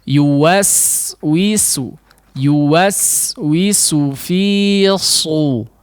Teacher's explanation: huruf sin adalah versi tipis daripada huruf shad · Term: menipiskan huruf sinnya